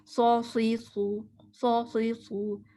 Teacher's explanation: زبان کی شیپ میں ٹپ آف دا ٹنگ کہاں جائے گی زبان کی نوک نیچے والے دانتوں کے پیچھے اور باقی موٹی زبان کرنی ہے پیچھے سے اٹھانی ہے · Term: سواد